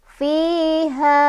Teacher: Ha di sini ketemu lagi sama mad tabi'i atau mad asli karena ada fathah ketemu sama alif. Dibaca panjang 2 harokat lagi ya. · Fi ada mad asli atau mad tabi'i karena ada kasrah bertemu dengan ya sukun. Cara bacanya panjang 2 harokat.